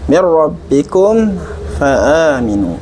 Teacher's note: pada kata mir rabbikum, ba-nya harus jelas, enggak keluar hamas. Dan pada kata fa'aminu, fa-nya dialirkan nafasnya.